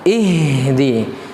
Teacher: Ihdina H besar dari pangkal tenggorokan.